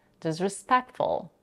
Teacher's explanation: completely drops the T between the sounds C and F disrespectful she also raises her intonation on the stress syllable PE to emphasize the word · she completely drops the T between the sounds C and F disrespectful she also raises her intonation on the stress syllable PE